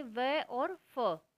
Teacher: Next है हमारा ओष्ठ, दोनों होठों से, प फ ब भ म। दंतोष्ठ है, निचले होठ और ऊपर के दांतों से